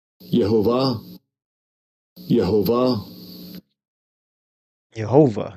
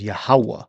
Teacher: They pronounce the wa with a V sound.